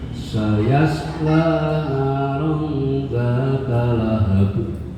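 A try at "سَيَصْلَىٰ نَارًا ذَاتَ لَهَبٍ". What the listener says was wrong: Rollnya kurang sedikit lagi aja. Iya, kurang dikit lagi panjangnya.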